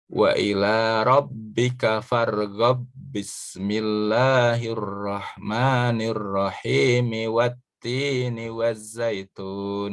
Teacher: Ba berhadapan dengan ba, maka dia idgham.